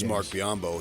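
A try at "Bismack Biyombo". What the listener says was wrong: Bismack. Not Bismarck. Bismack. No R.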